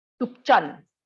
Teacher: tup is low tone and chan is falling tone.